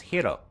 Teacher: it sounds like all she does is roll the r